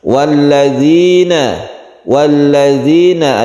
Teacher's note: ada mad thabi'i atau mad asli di sini karena ada sukun ya sebelumnya ada kasrah panjangnya satu Alif saja